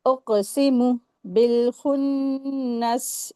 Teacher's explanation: काफ के ऊपर सुकून लगा हुआ है तो हुरूफ कलकला का रूल अप्लाई होगा